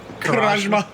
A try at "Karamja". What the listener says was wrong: I thought it was the M first.